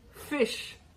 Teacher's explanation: The usual pronunciation of the word fish begins and ends with the voiceless fricatives, F and Sh.